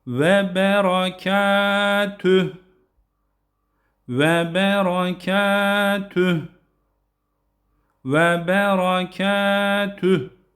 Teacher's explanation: Yine burada bir diğer husus da vav harflerinde ve ve derken dudaklarımızı öne doğru ve [Müzik] rahmetullahi şeklinde ve rahmetullahi ve bereketü. Tüh derken oradaki he'yi de belli edelim.